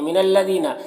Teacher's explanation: یہاں پر لام مشدد حرف ہے تو پیچھے والے متحرک حرف نون سے مل کر پڑھا جائے گا